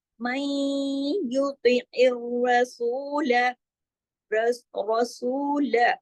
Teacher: मई युतिइर, आइन को आइन की तरह, इर रॉ, फिर इर जो है आगे रॉ जो है तो तशदीद है ना, तो दो आवाज रा की आनी चाहिए, सख्ती से जोड़ के पढ़ना है, रा को मोटा भी पढ़ना है।